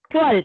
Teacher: यहाँ पे लाम को भारी नहीं करना, त्वल ऐसा लाम को भारी नहीं करना आपको, आपको सिर्फ ता को भारी करना है